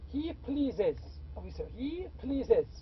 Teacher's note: As I said, if we have please, we have already an S. If we have to add another S, the other S is pronounced as IZ.